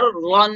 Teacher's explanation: تو را کے اوپر دو زبر ہے تو اس کو موٹا کر کے پڑھیں گے